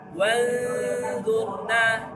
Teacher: Hukumnya ikhfa awsat. Bunyinya seperti ny. Wanzurna disamarkan 2 harakat.